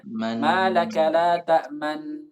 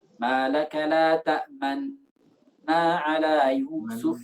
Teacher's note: Isyarat kedua bibir maju dibarengi dengan ghunnah. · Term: ismam